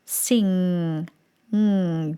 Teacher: that n G sound so you're going to create the sound you'll notice that there's a buzz and you'll feel the resonation the resonance go up into the nose area into the mask area · a sound that has the ng sound in it and normally that sound is created where the tongue touches the soft palate the roof of your mouth at the back of the tongue and the tip of the tongue sits rested against the bottom teeth